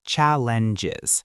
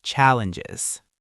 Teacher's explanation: The stress is at the beginning and that ng sound at the end is very soft.